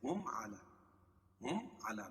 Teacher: اعلی کھڑا زبر قائم مقام الف مدہ کہ اس کو ایک الف کے برابر کھینچ کے پڑھیں گے